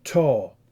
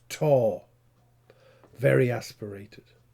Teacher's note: Here the t phoneme is realized as an aspirated voiceless alveolar stop. Notice that there is a superscript H symbol, right?